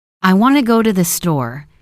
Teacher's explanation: the main words want, go, store are clear and strong. The small words to thee are softer and quicker. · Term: rhythm of English